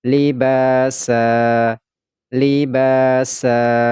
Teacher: libasa pada huruf ba ini kita baca panjang dua harakat kemudian ini huruf Sin ini berharakat fathah tanwin karena dia berada di akhir ayat maka ini tidak lagi dibaca San tetapi dibaca sa dan dipanjangkan dua harakat